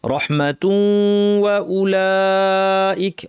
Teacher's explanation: রহমাতুন তানওয়িনের পর ওয়াও আসছে, ইদগাম করতে হবে গুন্না সহ ইদগাম, অর্থাৎ আমরা তু ওয়া পড়বো, মাঝখানের ওয়াওটায় নাক থাকবে